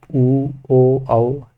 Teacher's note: गोल गोल ओठ हो जाता है इससे उ ओ औ तो गोल गोल हो रहा है तो